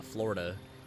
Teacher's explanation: the true Floridian way to do it is actually to skip the middle syllable